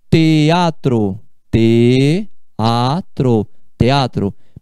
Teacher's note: esse EA você fala em sílabas diferentes.